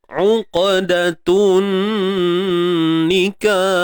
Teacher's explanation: Huruf qaf ni ada lantunan. Qalqalah sughra. Lantunan yang kecil ataupun lemah.